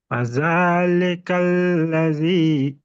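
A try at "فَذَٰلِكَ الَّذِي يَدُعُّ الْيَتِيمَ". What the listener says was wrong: دال کو ادا نہیں کر رہے صحیح آپ۔ ہاں، یادو ال، یادو صرف اتنا پڑھیے، یادو ال پڑھیے، یادو ال،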